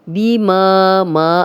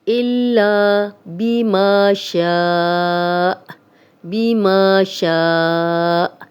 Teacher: ما الف مدہ ہے، شا الف مدہ ہے، آگے حمزہ آ گیا لیکن یہ 4 حرکات لمبا ہو گیا ہے، اور یہاں پہ جب ہم سٹاپ کریں گے تو حمزہ پہ جزم لگ جائے گی تو جھٹکے سے ہم اس کو وقف کریں گے۔